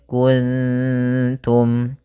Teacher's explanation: ta termasuk huruf Ikfa maka kita baca dengan bacaan Ikfa maka cara membacanya yaitu samarkan nunnya kepada huruf ta mak darada ta yaitu ujung lidah kita menempel dengan gusi atas